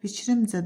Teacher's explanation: Fikrimcə də düşür ikinci hecaya